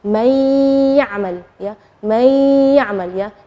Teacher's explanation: nunnya tidak jelas tapi ada suara dengung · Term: idgham